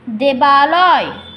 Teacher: দ্রুত উচ্চারণের সময় পূর্বপদ দেব এবং শেষ ধ্বনি অ এবং পরপদ আলোয় এই প্রথম ধ্বনি আ মিলিত হয়ে আ হয়েছে